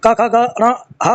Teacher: अ आ क वर्ग क ख ग घ ण ह और विसर्ग का उच्चारण स्थान कंठ है।